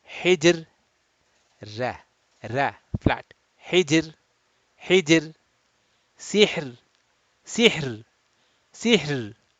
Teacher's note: Then the letter ra is pronounced soft or thin, that is muraqqaq